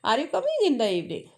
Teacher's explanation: question tone means your voice is raising, and statement tone is, that's a normal, that if I am getting confirmed that are you coming in the evening, so that's a similar normal tone.